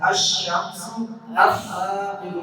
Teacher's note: لام جو ہے وہ پڑھا نہیں جائے گا، وہ چپ ہو جائے گا، سائلنٹ ہو جائے گا، وہ خاموش ہو جائے گا